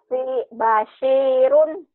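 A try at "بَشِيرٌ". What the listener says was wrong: Nah, Basirun. Berarti ya, shin-nya ya. Emang dari tadi kan shin-nya belum keluar. Basirun. Shin. Basirun.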